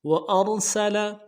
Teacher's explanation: را صحیح نہیں ادا کیا جاتا، موٹا کرنا ہے